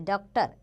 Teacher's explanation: इसका उच्चारण आ तथा ओ के मध्य की ध्वनि के रूप में होता है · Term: अर्धचंद्र